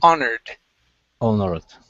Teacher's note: So the H is not pronounced in this word.